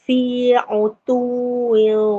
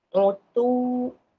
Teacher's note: Idgham ma'al gunnah. Kena masuk waw tu, tanwin tu ke dalam waw. Dan dengung 2 harakat lah.